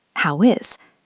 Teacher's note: How ends in a W sound. Is starts with a vowel, so we link.